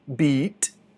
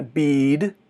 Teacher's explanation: Beat é super rápido e bead é mais comprido.